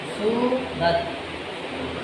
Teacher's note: تا جب پڑھتے ہیں تو زبان نچلے دانتوں کے اندر سے آگے ٹچ ہوگی اور وہاں پہ آ کے اس نے جام ہو جانا ہے، سورت، ٹھیک ہے؟